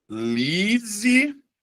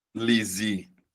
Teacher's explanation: Mas aí você vai perceber, analise, a sílaba tônica é a anterior, beleza? É a penúltima sílaba.